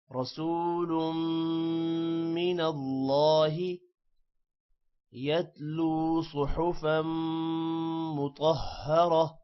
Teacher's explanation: را موٹا ہوگا رسول والا، میم پر غنہ ہوگا جبکہ اللہ کا نام بھی موٹا ہوگا